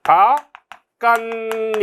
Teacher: 음절 끝소리 규칙에 따라서 중화 현상 벌어지고 니은이 첨가됐죠? 그 다음에 디귿과 니은이 만나서 니은 비음화로서 교체됐죠. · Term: 첨가 현상